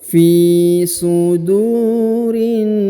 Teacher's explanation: Huruf du dibaca panjang 2 harokat karena di depannya terdapat waw sukun